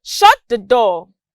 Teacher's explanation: you notice that my pitch dropped at door this shows a request and it's a statement too